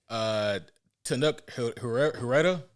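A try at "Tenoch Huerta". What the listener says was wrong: Yep, it's Huerta. You don't pronounce the H, bro.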